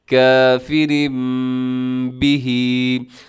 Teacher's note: ہم نے تنوین کو میم کے ساتھ تبدیل کر دیا ہے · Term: اقلاب